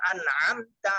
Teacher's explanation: প্রথম হলো হামজা, এরপর আইন চাপ দিয়ে